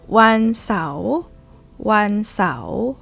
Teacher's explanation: Rising tone because Sao Sua belongs to high class, right?